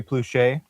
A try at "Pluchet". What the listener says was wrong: No, it's French, so they do pronounce the ET.